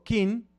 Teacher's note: Kin, con el sonido particular de la lengua tzeltal, significa fiesta. Pero si le quito la glotal y digo, en lugar de decir kin, digo kin, significa ve al baño